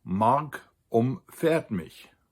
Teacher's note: where the stress is on the fa